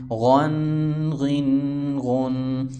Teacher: خا دو زبر خن، خا دو زیر خن، خا دو پیش خن، خن خن خن. غین بھی پر یعنی موٹا ہوگا، حروف مستعلیہ میں سے ہیں